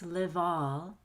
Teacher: you'll say vol like v is at the beginning of all